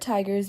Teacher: begins with an aspirated coronal alveolar consonant t sound made with the blade of the tongue which is the part of the tongue just behind the tip